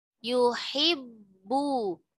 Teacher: Bu jahar, tidak ada aliran nafas